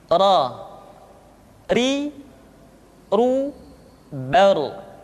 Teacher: Diucapkan dengan menyentuhkan punggung lidah dengan langit-langit. Ra, ri, ru, bar. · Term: huruf ra